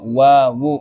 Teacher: kedua bibir atas dan bawah bersama-sama bertemu, adalah keluar makhrajnya huruf wawu, ketemu bibirnya wawu, udah mulai nempel walaupun nyerempet wawu kan, wawu udah mulai dekat.